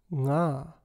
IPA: ŋ